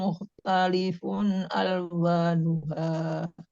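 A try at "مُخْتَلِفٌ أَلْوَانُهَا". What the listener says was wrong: Mukhtalifun alwa. Di situ jangan diikhfakan. Mukhtalifun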